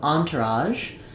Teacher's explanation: It's like an sh sound but my voice is on. In the dictionary you're going to see this as on to raj. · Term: voiced sound